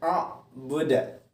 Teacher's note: Kemudian di ujung ayat a'buda, nah itu cara membacanya harus dipantulkan karena dia adalah qalqalah kubra. Jadi selama ini kadang anak-anakku masih ada yang membaca a'budu, nah itu keliru.